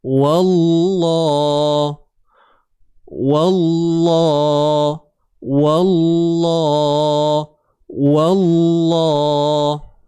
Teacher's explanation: Tebalnya pada lam. Huruf waw tak tebal. Huruf waw biasa je.